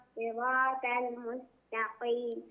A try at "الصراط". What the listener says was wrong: اهدنا الصراط لا لا تقل الصراط تاء، خليها طاء، صراط طاء طل طل طل.